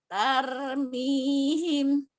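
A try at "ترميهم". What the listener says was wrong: Kurang tebel. Masih tar. Jangan tar, tapi tar.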